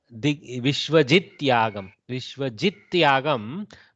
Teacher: Jid becomes, Takara becomes soft Dakara in the presence of that Yakara. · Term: Jastva Sandhi